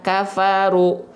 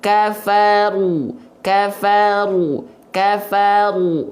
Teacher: istila itu adalah mengangkat bagian pangkal lidah kita